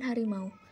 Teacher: Disebut diftong atau vokal rangkap karena posisi lidah ketika memproduksi bunyi ini pada bagian awal dan bagian akhirnya tidak sama. Ketidaksamaan itu menyangkut tinggi rendahnya lidah, bagian lidah yang bergerak serta strukturnya.